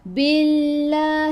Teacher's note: Fakafa, fa dua harakat, ada alif mad asli. Billah, sebelum Allah ada baris bawah, kena baca nipis. Billah, bukan billah.